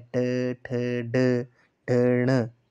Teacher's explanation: तालु के मूर्धा भाग से जैसे हम उच्चारण कर रहे हैं ट, ठ, ड, ढ, ण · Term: मूर्धन्य व्यंजन